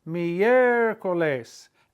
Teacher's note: It has to go on the E, because if you put it on the I, you'd break up the diphthong. It's miércoles, accent on the E.